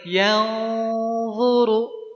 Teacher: Nun sukun atau tanwin ketemu dengan huruf-huruf yang nebal itu, jadi nebal juga si gunnahnya. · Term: ikhfa